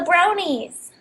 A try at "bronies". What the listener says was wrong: You sounded like you said brownie. Brony. You were saying brownie.